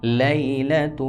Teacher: لام یا زبر لی، یا کو نہیں کھینچیں گے بالکل، یا لین ہے. لام زبر لا لیلا، تا لام پیش تل لیلۃ.